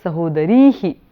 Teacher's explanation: you lengthen the vowel and put a visarga. So sahodari becomes sahodarihi.